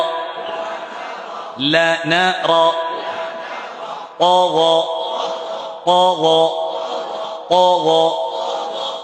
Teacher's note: জবর উচ্চারণ করছি, মোটেও ঠোঁট গোল হবে না।